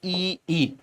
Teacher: इनका उच्चारण स्थान तालू होता है तालू